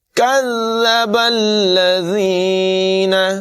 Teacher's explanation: با کو لام سے ملائیں گے